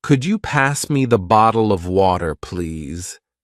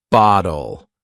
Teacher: softens the T in Bottle to almost sound like a d